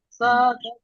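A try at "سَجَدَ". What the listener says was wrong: সা টান হবে না ।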